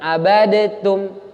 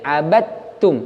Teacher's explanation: Bunyi dalnya melebur ke huruf ta. Berarti nggak perlu dikolkolah ini, bukan abadatum, tapi abadtum, langsung ke ta. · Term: idgham